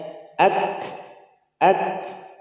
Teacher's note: Dia muncul napasnya saat disukun